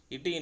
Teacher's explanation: நுனி நா வந்து நுனி எண்ணத்துல பொறந்ததுனால வருது